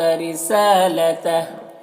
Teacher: یہاں پر وقف کریں گے تو الٹا پیش سکون سے بدل جائے گا